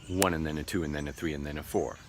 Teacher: And was reduced and modified to be n. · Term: weak forms